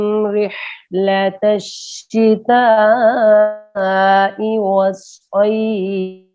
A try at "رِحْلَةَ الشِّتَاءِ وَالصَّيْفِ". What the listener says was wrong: یہ مد ہے نا رحلت الشتاء کے اوپر, اس کو اس سے تھوڑا سا اور لمبا کرنا ہے. إيلافهم رحلة الشتاء والصيف.